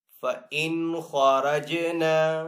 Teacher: فَإِنْ خَرَجْنَا، خا کو یہاں پہ پر پڑھیں گے حروف مستعلیہ میں سے، را کو پر پڑھیں گے، را کے اوپر زبر ہے اس لیے پر پڑھیں گے، جیم یہاں پہ حروف کلکلہ میں سے ہے، تو جیم کے اوپر کلکلہ بھی کریں گے